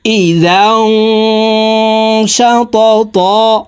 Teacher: লান নাদউ মিন দুনিহি لن ندعو من دونه إلها لقد قلنا إلها لقد قلنا إذا شططا إذا এখানে ইকফা গুন্না, তানউইনের পরে ইকফার হরফ শিন আসছে, এই কারণে এই জালকে তানউইনওয়ালা জালকে নাকের ভিতরে লুকাইয়া গুন্নার সহিত পড়তে হবে